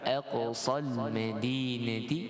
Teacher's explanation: Kemudian sad dengan bacaan isti'la, huruf sad ni tebal. Aqsal madinati, alif lam qamari, izhar idgham, ataupun masuk dengan secara izhar, tak ada dengung ataupun apa-apa sifat tambahan, lantunan dan sebagainya.